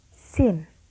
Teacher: It is sounds in which there is a constriction between the blade or tip of the tongue and the alveolar ridge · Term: alveolar sounds